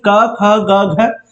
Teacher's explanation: क ख ग घ कंठ से निकला। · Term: क वर्ग